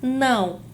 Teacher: A palavra não tem o tio apenas para marcar esse processo de nasalização, para marcar que não é um A, e sim um an